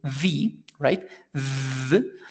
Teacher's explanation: if we pronounce the sound of the V right V it's going to generate vibration in our throat and we can touch it the idea is to touch it